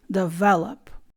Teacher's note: The stress is on the second syllable, so you say develop.